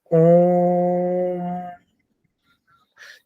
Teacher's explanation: ओम में जब ओ का उच्चारण करते हैं तो उसका भी हम प्लुत ही करते हैं